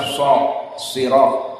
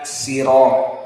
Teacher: Sebagian Arab mengatakan makhrajnya shad, sirat. Sebagian mengatakan sirat dengan sin.